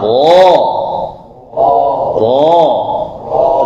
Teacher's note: fathah tapi dia tebal ya itu tetap buka mulutnya tapi ditebalkan